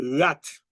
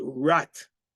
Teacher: In Haitian Creole, your tongue stays flat between your lower teeth, and the R sounds comes from the throat. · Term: Haitian Creole R